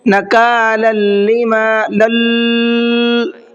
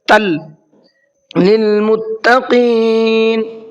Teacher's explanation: تنوین کے بعد میں لام ہے تو غنہ اخفا کچھ نہیں پڑھیں گے، صاف صاف پڑھیں گے۔ تل للمتقین، متقی، قاف کو منہ بھر کے پڑھنا ہے۔